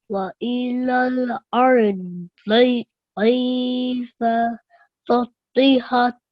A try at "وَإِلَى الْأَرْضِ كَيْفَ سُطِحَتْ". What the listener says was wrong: Sutihat. So remember, it's not so, it's su. With the dhamma. Su. وَإِلَى الْأَرْضِ كَيْفَ سُطِحَتْ.